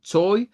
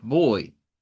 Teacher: el diptongo oy que se forma con o corta e i corta